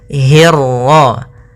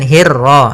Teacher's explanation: hi-nya tipis, ketemu ro-nya yang tebal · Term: ra tafkhim